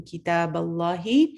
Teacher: اللہ میں جلالہ آپ کا ہیوی ہوگا، فل ماؤتھ پڑھا جائے گا